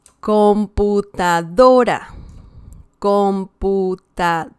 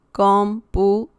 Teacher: we have here the stress on the second to last syllable. It's not the last one, it's the one before that one.